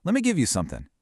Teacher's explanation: saying let me requires you to actually stop the air flow in your mouth for the T and then start it all over again for the M.